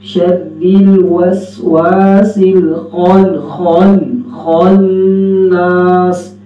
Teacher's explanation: جی خا موٹا بھی ہوگا، ہونٹ گول نہیں ہوگی